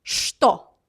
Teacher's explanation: But usually we pronounce ch, t like sh sound. So it's что.